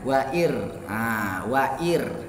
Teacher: Jadi ro-nya itu tipis karena huruf sebelumnya kasroh.